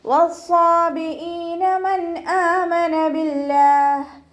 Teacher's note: വസ്വാബിഈന മൻ ആമന ബില്ലാഹ് നൂൻ സാക്കിനയ്ക്ക് ശേഷം ഇവ്ഹാറിൻ്റെ അക്ഷരമായിട്ടുള്ള ഹംസയാണ് വന്നിട്ടുള്ളത്. നൂൻ സാക്കിനയെ മണിക്കാതെ വ്യക്തമാക്കി ഉച്ചരിക്കുക കേട്ടോ.